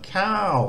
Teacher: a cow with a falling tone is rice